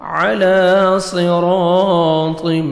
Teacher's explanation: صاد کو موٹا کر کے پڑھنا ہے، اور را کے اوپر جب زبر آتا ہے را کو موٹا کر کے پڑھتے ہیں، اور الف مدہ ہے 1 سیکنڈ آپ نے را کو کھینچنا بھی، الف سے پہلے زبر ہے۔